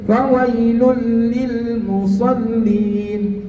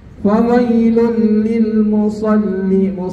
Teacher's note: nun mati atau tanwin bertemu dengan lam atau ro, maka hukumnya idgham bila gunnah, tidak berdengung